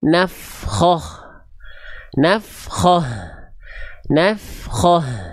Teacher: ketika kita baca dalam kondisi stop pada huruf ta marbutah, maka dia pasti dibaca dengan keadaan ha besar sukun